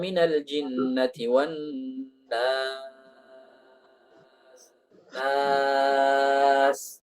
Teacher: Nun masuk ke hidung, baru alifnya tidak masuk ke hidung. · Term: gunnah